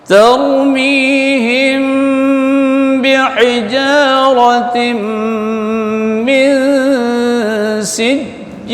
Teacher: Him mim mati jumpa dengan ba ikhfa syafawi dengung. · Hijaratim tim baris tanwin jumpa dengan mim idgham bi gunnah dengung. Min sijil nun mati jumpa dengan sin ikhfa dengung.